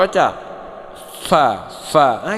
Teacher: saya bilang orang Sunda membacanya antara bibir bawah dan bibir atas sebenarnya antara bibir bawah dengan gigi atas